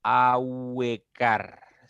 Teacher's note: la u es cerrada la e es abierta Ahora recuerden que es creciente cuando tú al pronunciar el diptongo va de vocal cerrada a abrir tu boca Un poquito más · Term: diptongo creciente